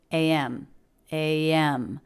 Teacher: spilled in IPA with the ay as in say diphthong and then again the as in bed vowel and the M consonant